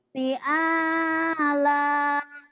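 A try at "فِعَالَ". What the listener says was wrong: V-nya panjang juga. Ala, fi, ala, semuanya panjang ya mah ya.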